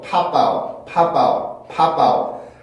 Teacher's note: 앞에는 P 발음이 맞지만 뒤에는 모음과 강세 있는 모음과 붙기 때문에 바웃으로 소리가 변하게 됩니다. 그래서 팝아웃, 팝아웃, 팝아웃 이렇게 소리가 변하게 되고 이것도 마찬가지예요.